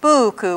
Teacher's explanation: with a long U in the first syllable and a short U in the second